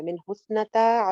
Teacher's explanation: من حسنتا، ہا کو سا سے جوڑے ہیں، سا کا مخرج ہم پڑھ چکے ہیں. نہ سنگل حرکت ہے، تا کا الف لمبا ہے